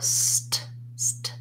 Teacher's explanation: Basically the S sound continues, the T stops, and the T, and then the S sound continues again